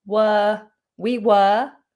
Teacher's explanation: The word weren't contains the letter R, but we don't pronounce it.